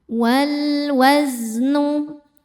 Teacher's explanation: karena ada alif lam menghadapi huruf qamariah yaitu wau dibacanya jelas izhar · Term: alif lam qamariah